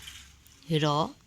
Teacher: जिह्वा का स्पर्श मूर्धा से होता है। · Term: अंतःस्थ